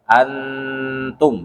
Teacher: kita mendengungkan atau menamarkan huruf nun tetapi Setelah itu kita sudah bersiap-siap menyebutkan huruf setelahnya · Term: Ikfa Hakiki